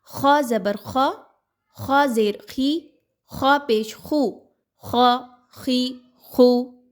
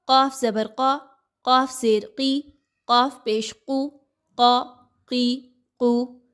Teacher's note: خا اور قاف دونوں حروف مستعلیہ میں سے ہیں، کسی بھی کنڈیشن کے ساتھ ہوں، زبر زیر پیش کوئی بھی حرکات ہو، ان دونوں کو بھی موٹا ہی پڑھا جاتا ہے